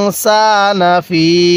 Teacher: ফা এর মধ্যে আমরা তিন আলিফ টান দিব কারণ এই যে উপরে একটা চিকন চিহ্ন দেখতেছি যার কারণে তিন